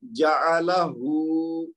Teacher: आखिरी वाला हरफ जो है सिर्फ उस पे दो हरकत खींचेंगे, पहले जीम ऐन लाम तीनों पे एक एक जबर है तो इसको एक एक हरकत देंगे